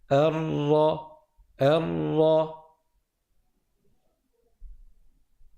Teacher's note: on va monter la langue au palais, mais c'est le côté droit et le côté gauche qui vont toucher le palais et on va laisser au centre un espace vide